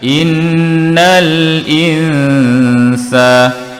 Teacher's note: di sini juga dengung, nun bertanda sakinah, selepasnya huruf sin, ikhfa haqiqi.